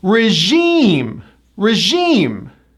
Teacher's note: This is another word that comes from the French. The 2nd syllable gets the stress, and it also has that high E vowel.